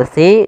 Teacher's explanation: adanya kasrah bertemu dengan huruf ya maka kita panjangkan lafal SII dua harakat hati-hati dalam melafalkan huruf SII karena di sini jangan dibaca kasiro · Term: mad thai'i